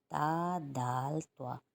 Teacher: زبان کا جو کنارہ ہے اوپر کے آگے کے 2 دانتوں کی جڑ سے لگے گی، تا دال طوا ادا ہوں گے۔